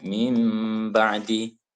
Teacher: Apabila nun sukun atau tanwin bertemu dengan ba, maka terjadi hukum bacaan iklab, yakni membalikkan atau merubah nun menjadi mim dan harus ditahan